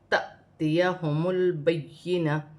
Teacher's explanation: یا مشدد ہے، اسے جماؤ کے ساتھ پڑھا جائے گا · الف پر جزم کی حرکت ہے تو اسے حمزہ پڑھا جائے گا اور جھٹکے کے ساتھ